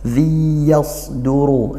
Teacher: tanwin bertemu ya dibaca idgham bighhunah dibaca masuk langsung ke y-nya tanpa ada bunyi nunnya